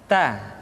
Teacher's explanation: Keluar dengan menyentuhkan ujung lidah kita dengan gusi-gusi gigi seri bagian atas. Ta. Kemudian huruf ta ketika diucapkan terdengar ada nafas yang mengalir, atau dalam ilmu tajwid disebut dengan sifat al-hamas.